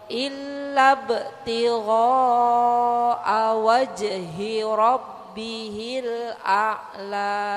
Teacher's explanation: Hati-hati illa btigha'a-nya mat wajib mutasil. Jadi 5 harokat Bu